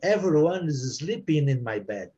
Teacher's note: Essa frase, não pronunciando o S, everyone is sleeping in the... Você junta o N com IS.